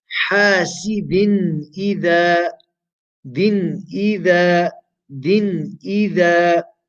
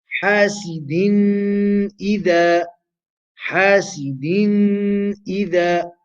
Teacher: Because tanween has appeared before the letter of the throat, we make that tanween short, sharp, and clear.